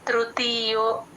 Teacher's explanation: ఆ తృ కి మాత్రం ఎట్టి పరిస్థితుల్లో స్ట్రెస్ ఇవ్వకూడదు ఆ తృతీయో చాలా తేలిగ్గా చెప్పాలి త్రు ని తృతీయో తి కి దీర్ఘం